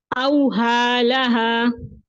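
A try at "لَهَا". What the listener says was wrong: बारिकल्लाहु फीक।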